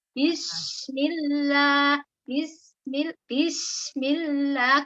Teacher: Sinnya juga dialirkan seperti huruf ha sukun, sin sukunnya.